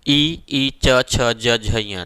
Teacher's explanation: इनका उच्चारण स्थान ई च छ ज झ ञ, देखिएगा तालव्य से होता है